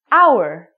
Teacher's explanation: because this word hour sounds like a vowel, because the H is silent